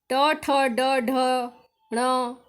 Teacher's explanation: जिसमें मूर्धा का स्पर्श करते हैं वह ट वर्ग है।